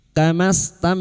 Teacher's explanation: Mim sukun bertemu kaf idhar syafawi. Mim sukun dibaca jelas tanpa mendengung.